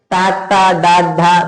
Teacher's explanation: నాలుక మూర్ధన్యాన్ని రాస్తుంది కాబట్టి అవి మూర్ధన్యాలు